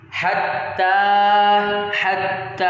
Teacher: جو تا کے اوپر کھڑا زبر ہے اس کو کھینچیں گے